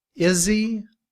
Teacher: in reduced form we drop the sound of the H and combined with is we say Izzy